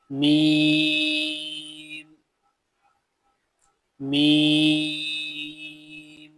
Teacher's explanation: मीम कहां से अदा होता है? बंद होठों के खुश हिस्से से। मीम जो आपके होठ बंद होंगे इनके बाहर वाला जो खुश हिस्सा होता है। · میم کہاں سے ادا ہوتا ہے؟ بند ہونٹوں کے خشک حصے سے۔